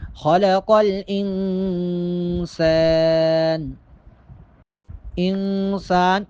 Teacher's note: نون پر اخفا ہوگا، یعنی آواز کو تھوڑی دیر کے لیے ناک میں چھپائیں گے